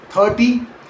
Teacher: In 30, the stress falls on the first syllable 30 and it ends in that soft quick Y sound instead.